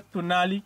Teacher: el sonido de la O alargada tiene una pronunciación muy cercana al de la U, por lo que en varias variantes este ha mudado en U